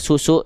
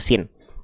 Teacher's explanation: Ada desisannya, mengalir nafasnya, mengalir suaranya. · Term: huruf sin